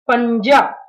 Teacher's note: यहाँ पर न्या जो है वो आधा उच्चारण ले रहा है, क्योंकि ज जो है वो च वर्ग का है